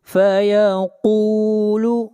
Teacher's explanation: قاف حروف مستعلیہ میں سے ہے، قاف کو موٹا پڑھیں گے